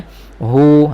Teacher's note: Tahqiq, kena jelaskan bunyi angin ha. Hu, rasa di pangkal tekak, makhrajnya situ.